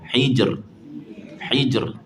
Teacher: Kena bagi ada getaran yang nipis pada huruf ra.